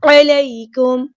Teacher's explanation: عین کو وسطی لیکن مڈل تھروٹ سے ادا کرنا ہے، یا ساکن، یا ساکن سے پہلے زبر ہے تو مد لین ہو رہی ہے، نرمی سے موڑیں گے۔